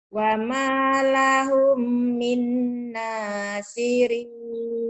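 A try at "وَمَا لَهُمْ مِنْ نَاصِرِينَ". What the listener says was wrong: Bagus. Tapi lahumnya ini ditahan.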